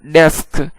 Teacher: یہاں پہ سین کو کاف کے ساتھ ملا کر جلدی ادا کیا ہے